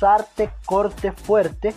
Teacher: en los fonemas vibrantes se produce un rozamiento del aire contra la punta de la lengua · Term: vibrante simple